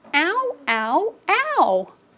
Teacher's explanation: A diphthong is when we have 2 vowels like O and U, and they come together so fast they make 1 syllable. Because sometimes kids think OU makes 2 syllables.